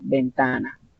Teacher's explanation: la sílaba tónica en el penúltimo lugar o en la penúltima sílaba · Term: graves